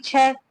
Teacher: इचु यशाना में तालव्य। छ ध्वनि का उच्चारण स्थान तालव्य है।